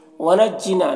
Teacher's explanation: ना में अलिफ मद्दा है, एक अलिफ के बराबर खींचेंगे